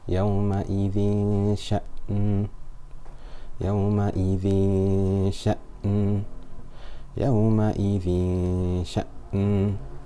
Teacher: Below we have يومئذ, يومئذ, يومئذ, tanween followed by a sheen. Sheen is not one of the full mouth letters, so the ghunna will be light.